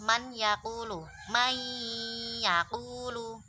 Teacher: kalau ada nun sukun bertemu ya, maka dengungnya nun itu masih ada dan dengungnya itu berganti dengan apa itu namanya, huruf selanjutnya yaitu ya. · pada idgham nakis, huruf pertama itu dimasukkan ke huruf kedua, namun huruf pertama itu masih ada sifatnya, jadi tidak langsung melebur menjadi satu ke huruf yang kedua.